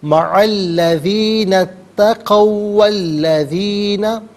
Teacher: واو پر زبر ہے، اسے الذین کے لام کے ساتھ ملائیں گے، درمیان میں سے الف حمزہ کو حذف کریں گے۔ ہم پڑھیں گے، مع الذین اتقوا والذین هم محسنون۔